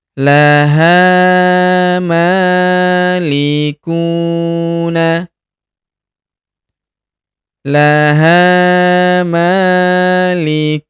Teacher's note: Huruf ku kita panjangkan 2 harokat karena terdapat waw sukun di depannya.